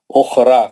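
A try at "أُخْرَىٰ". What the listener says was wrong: را مد اصلی نہیں ہے، را پہ زبر ہے، موٹا پڑھیں گے، اس کے بعد الف نہیں ہے، اس میں حمزہ آ گیا، خالی الف رہنا، مد اصلی کو خالی الف رہنا، خالی الف ہونا، یا الف پہ پیش آ گئی، مد اصلی نہیں ہو سکتا، را ایک حرکت پڑھیں گے، وزرا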